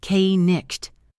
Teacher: In Old English, both of those were pronounced k-nicht, hard K, hard GH sound. But over centuries, both those sounds fell away and the spelling stayed.